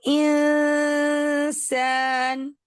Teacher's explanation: और फिर उस वक्त जब आप सीन के करीब होंगे तो पहले आप आवाज नाक में लेकर जाएंगे और जब आवाज यानी नाक में से लेकर वापस आ जाएंगे फिर सीन पढ़ेंगे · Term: इफा